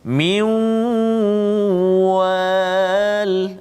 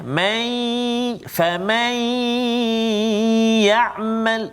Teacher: dengung nun tu masih ada lagi, nun mati bertemu dengan waw, kan? Kalau ya, nun mati bertemu dengan ya, may famay ya'mal, maksudnya dia tak terus pergi pada ya, kan? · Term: idgham naqis